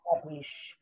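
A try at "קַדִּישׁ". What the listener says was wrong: Yes, it was prepping you to get to that word, Kadish.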